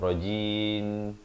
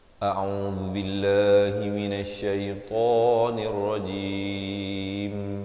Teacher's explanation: Nirrajim nun baris kasrah terus naik di atas ra yang bersabdu di sini, dan akhirnya dirapatkan mulut untuk menyempurnakan bunyi mim